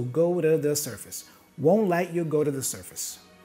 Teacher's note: The T here for let also is pronounced as a stop consonant, let you, won't let you, go to the surface, go to the surface. So two is reduced to a da